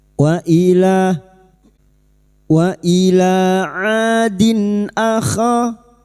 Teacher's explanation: huruf ain fathah diikuti alif, dua harokat kita panjangkan matabi'i.